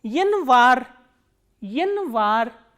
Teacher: stress is on A, that is why this Ya is reduced to E